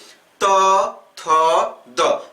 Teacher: आप देख रहे होंगे कि जब आप त, थ, द यानी त वर्ग का जब आप उच्चारण कर रहे हैं, तो जो आपकी जिह्वा है वह ऊपर के जबड़े में दांत के पीछे अर्थात दांत में स्पर्श कर रही है। अर्थात जब आप त वर्ग का उच्चारण करते हैं तो आपकी जिह्वा दांत से स्पर्श करती है। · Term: दंत्य वर्ण